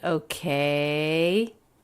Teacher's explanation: pitch goes up at the end okay it's a yes no question